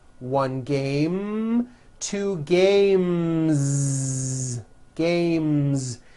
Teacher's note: The last sound you hear in the word game is the M sound, which is a voiced consonant. So because of that, when you add an S, the S should also be voiced.